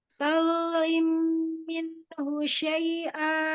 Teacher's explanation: Turunkan sedikit kadar tafkhim di huruf dha sukun.